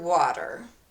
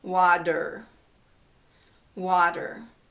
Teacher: It has a T in the spelling, but this is pronounced as a D. Okay, there's a vowel before the letter T, and there's a vowel after the letter T. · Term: T sounding like D